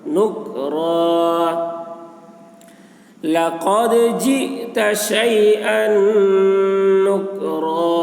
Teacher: نون مشدد، نون میں غنہ ہوگا